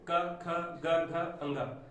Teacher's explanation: तो क वर्ग के सारे अक्षर कंठ व्यंजन कहलाते हैं, क्योंकि इनके उच्चारण में जीभ का पिछला भाग और पिछला तालु आपस में स्पर्श करते हैं, तो ये हो गए कंठ व्यंजन।